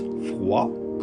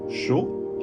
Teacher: in the words froid, cold, chaud, hot, the final D isn't pronounced